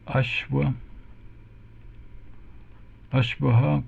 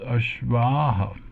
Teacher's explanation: we are converting this short ah for the singular form to a long ah when we're talking about many horses